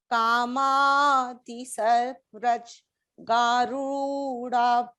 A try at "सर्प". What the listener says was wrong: Sarpraj nahi, sarpa. नो, हर शब्द को अकारांत में कीजिए. सर्प, व्रज, वैराग्य, विवेक.